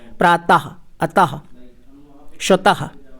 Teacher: विसर्ग का उच्चारण करते समय हा की ध्वनि निकलती है